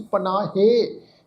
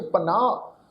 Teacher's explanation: ਇਹ ਜਿਹੜਾ ਸ਼ਬਦ ਆ ਪੱਪਾ ਨੰਨੇ ਨੂੰ ਕੰਨੇ ਦੀ ਮਾਤਰਾ, ਹਾਹੇ ਨੂੰ ਸਿਆਰੀ ਦੀ ਮਾਤਰਾ ਲੱਗੀ ਹੋਈ ਆ। ਇੱਥੇ ਹਾਹੇ ਦੀ ਜਿਹੜੀ ਸਿਹਾਰੀ ਦੀ ਮਾਤਰਾ ਇਹ ਵੀ ਪ੍ਰੋਨਾਊਂਸ ਨਹੀਂ ਹੋਏਗੀ, ਪੜ੍ਹੀ ਨਹੀਂ ਜਾਏਗੀ। ਇਹਦਾ ਉਚਾਰਨ ਅਸੀਂ ਪਨਾਹੇ ਇਸ ਢੰਗ ਨਾਲ ਨਹੀਂ ਕਰਨਾ।